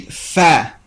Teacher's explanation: the two organs of speech that produce fa are the upper teeth and the lower lip. After they touch each other to produce the letter, they move away from each other.